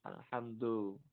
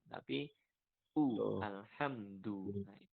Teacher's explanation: Hati-hati ketika membaca du. Hati-hatinya jangan sampai membacanya condong ke bunyi o.